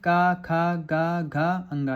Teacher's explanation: इन सबका उच्चारण स्थान कंठ है